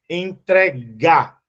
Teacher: Porque, se você perceber, ó, entregar, a sílaba mais forte é o G. Ela é uma oxítona.